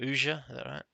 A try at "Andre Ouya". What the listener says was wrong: Ouya. I call him Ouya. Andre Ouya. Silent J.